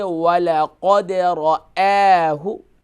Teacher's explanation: وَلَقَدْ را جو ہے فل میں آؤٹ ہوگا اور حمزہ جو ہے یہ لائٹ ہوگا